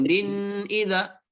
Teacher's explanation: izhar jelas, jangan ada dengung.